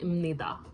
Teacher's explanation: The biup sounds like a mium. It's pronounced as a mium.